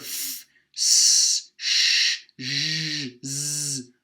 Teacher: It's not a stop. It's not completely cutting off the airflow, but it's such a narrow passage that there's a lot of friction in the air, hence the name fricative.